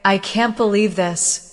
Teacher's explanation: With a rising tone at the end, it shows surprise. If you say, I can't believe this, with a downward tone, it may show disappointment.